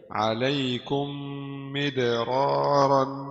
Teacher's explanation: ميم ساكنة مدغمة في الميم المكسورة بغنة حركتين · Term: Idgham mithlaini saghir